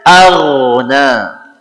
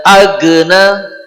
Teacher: huruf ghain itu bergetar, tidak agna ya. Indonesia punya diganti g, tidak tepat.